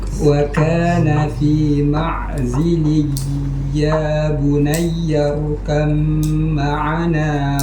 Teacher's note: Nah, berarti kan ada hukum idgham sini, bukan izhar. Tahan lagi lebih lama. Namanya idgham naqis bigun.